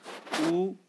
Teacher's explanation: और जो वृत्ताकार, जिन स्वरों का उच्चारण जब हम करते हैं तो हमारे जो होठ हैं, ओष्ठ, जिसे हम ओष्ठ कहते हैं, होठों का जो आकार या आकृति क्या हो जाती है? गोल हो जाती है, गोलाकार हो जाती है। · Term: वृत्ताकार स्वर